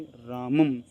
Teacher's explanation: अनुस्वार का उच्चारण म की तरह होता है